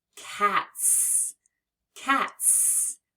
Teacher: the t is an unvoiced sound which means when we add the S we hear it as s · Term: S sound